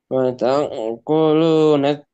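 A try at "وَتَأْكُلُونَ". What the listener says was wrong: Wata jangan ada lebihan. bukan wata gitu ya. Wata stop saja suaranya. Wataku. Ini suaranya nyambung. A B C. Nah, dari A ke B berhenti dulu. A B C. Nah, hamzah itu seperti itu. Dia memutus suara. Wata. Bukan ada e-nya. Wata. Jangan seperti itu.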